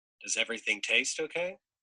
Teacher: you can hear that um Rising tone which is sort of an implication for you to say yes it does · you can hear that rising tone